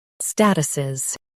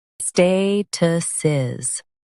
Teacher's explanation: US stresses STA, UK stresses stay.